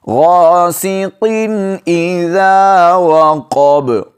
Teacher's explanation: غاسقین کے بعد آگے حروف حلقی میں سے حمزہ ہے تو یہاں پر آپ نے غنہ نہیں کرنا، غاسقین اس طرح نہیں پڑھنا۔ · قاف کو موٹا کر کے پڑھیں گے اور با پر وقف کی حالت میں قلقلہ کریں گے